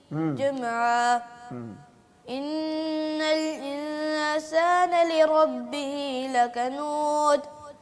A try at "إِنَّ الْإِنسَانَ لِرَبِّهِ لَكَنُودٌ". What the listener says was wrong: قلقلہ کریں گے دال پہ بیٹا. لکنود.